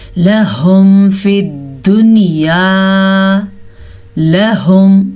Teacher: اس کو لاہم پڑھنے کی غلطی نہیں کرنی